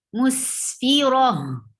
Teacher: Circle ta. So whenever you stop on circle ta, you change into ha. Musfira. Ra will not be long because this is not a mud letter.